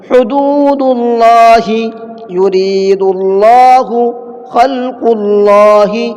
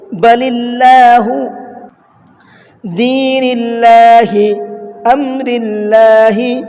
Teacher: تینوں جگہ پر اللہ کے لام سے پہلے پیش ہے، اس لیے میں نے تینوں جگہ پر اللہ کے لام کو منہ بھر کے پڑھا ہے